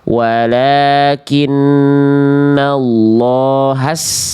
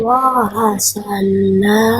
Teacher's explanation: Nggak perlu ditekan sinnya, nggak ada tasydidnya.